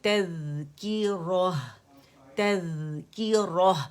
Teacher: Tip of the ٹنگ آپ کی جائے گی سامنے, ہمارے انسائزر چوڑے اوپر کے 2 دانے ہیں, ثنایا علیا, اس کے ایجز کو ہماری ٹپ لگے گی, اور چاول کے دانے جتنی باہر ہوگی, ٹھیک ہے. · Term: ذال باریک ہے